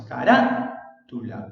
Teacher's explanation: el acento está en la sílaba ra. Carátula. El acento entonces ya cambió de ubicación. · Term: esdrújula